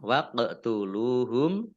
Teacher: Lam domah wawu sukun mat tabi'i panjang 2 harokat. · qaf sukun, bacaan qalqalah dipantulkan ya, ditampakkan pantulannya